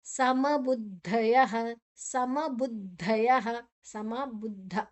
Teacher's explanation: ದ ಬೊಕ್ಕ ಧ ದ ಅಲ್ಪ ಪ್ರಾಣ ಧ ಮಹಾಪ್ರಾಣ ರಡ್ಡು ಅಕ್ಷರ ಉಂಡಾಯಿಟ್